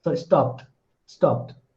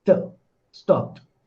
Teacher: if you hear the last sound carefully, you will find that ed is pronounced as t